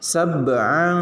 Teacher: Nah ini sab'a ini qalqalah sugro karena ada di tengah kalimat.